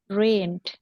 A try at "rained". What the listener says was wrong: Ada D-nya di belakang ya, jangan rain aja.